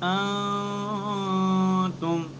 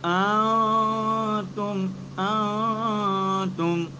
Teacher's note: نون ساکن کی آواز کو مخرج سے الگ الگ کر خیشوم کے اندر چھپا کر اس طرح ادا کرنا ہے، نہ ادغام نہ اظہار بلکہ درمیانی کیفیت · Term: اخفا